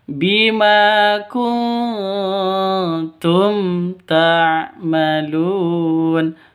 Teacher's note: mim mati bertemu dengan tak, jelas terang karena bacaan izhar, tidak boleh didengungkan, tidak boleh disentak